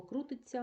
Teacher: слово крутиться ми з вами пам'ятаємо чується ць